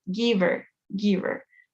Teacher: Entonces esa H de her ya no se pronuncia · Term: Se come la H